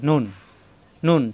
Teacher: সবাই খেয়াল রাখুন এবং চিনে রাখুন। নুন জিহ্বার আগা জিহ্বার আগা উপরে তালুতে লাগবে। নুন নুন। শব্দের শুরুতে থাকলে এরকম মাঝখানে থাকলে এরকম। · নুন জিব্বার আগা উপরে তালুতে লাগবে।